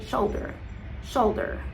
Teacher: And then the first letter, the O you wanna keep it in your mind, but you also wanna think mentally of an A, because you're not gonna pronounce it as sholder or shalder, it's in between